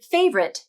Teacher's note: the lips round for the r and the tongue pulls back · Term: r consonant